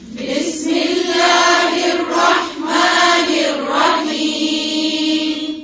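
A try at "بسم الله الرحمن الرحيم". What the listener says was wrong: بی یہ بے نہیں ہے, کیا ہے؟ بی. بسم اللہ. پھر سے پڑھیں.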